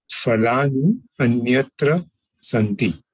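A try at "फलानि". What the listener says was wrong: Okay, this is phalani, not falani. Pa. You have to point the lips. Pa. Phalani. It's not fal like Hindi. Phalani.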